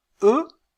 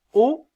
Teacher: si je dis e je sens que ma langue est un peu plus en avant quand je dis ha elle est un peu plus en arrière